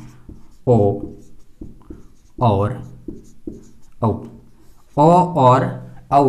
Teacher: इसका मतलब ये है कंठ और ओष्ठ इन दोनों से बोला जाता है कौन कौन सा वर्ण? ओ और औ, ओ और औ ये दो वर्ण कंठ और ओष्ठ इन दोनों से बोला जाएगा, कंठ से और ओष्ठ से होंठ से बोला जाएगा। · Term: कंठोष्ठ